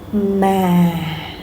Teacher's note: your voice falls slowly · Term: falling tones